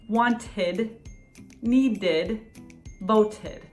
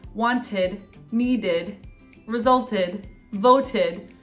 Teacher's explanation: ends in it or d sound a t or a d we pronounce the second syllable ed